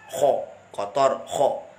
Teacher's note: Kalau kha kan rokhawah hams, artinya suaranya, nafasnya dilepas.